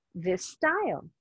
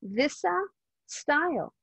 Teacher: I make the S sound a little bit longer